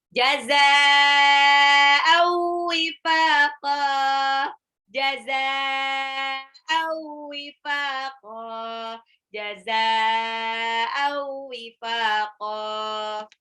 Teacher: Mad wajib mutasil ya, 6 harokat. Au tanwin ketemu waw, idgham bil gunnah, lebur dan ditahan.